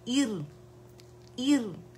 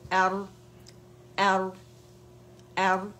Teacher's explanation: اور جب فتح لگائیں گے ار, ار, ار, موٹا پڑا جائے گا, ایر باریک پڑا جائے گا, ار موٹا پڑا جائے گا